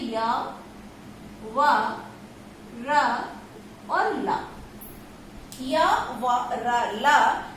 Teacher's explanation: जो हमारे अंतस्थ वर्ण होते हैं, जैसे य, व, र और ल, य, व, र, ल, जो हमारे अंतस्थ वर्ण होते हैं, इन अंतस्थ वर्णों का जो आभ्यंतर प्रयत्न है वह ईषद स्पष्ट होता है। यानी कि य, व, र, ल, यड़ प्रत्याहार के अंतर्गत आने वाले जो अंतस्थ वर्ण हैं, जिन्हें हम अर्ध स्वर या अर्ध व्यंजन भी कहते हैं, इन ऐसे अंतस्थ वर्णों का जो आभ्यंतर प्रयत्न है वो ईषद स्पष्ट होता है।